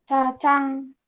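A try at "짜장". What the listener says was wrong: Jadi bacanya cacang. Bukan jajang. Cacang ya. Karena sekarang sudah tahu, jangan dibaca jajang, bacanya cacang. Cacangnya, bukan jajangnya. Cacang. Itu adalah huruf-huruf yang bunyinya hampir mirip.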